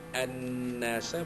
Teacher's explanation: Ra'aitan nasa, an-nasa, alif lam syamsiyah, alif lam sabdu, an-nasa wajibul gunnah, kerana nun itu bersyaddah, bersabdu. Nasa, nun alif tana mad asli.